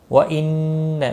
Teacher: نون مشدد پر غنہ ہوگا، مد منفصل ہے، تین الف کے برابر کھینچ کر پڑھیں گے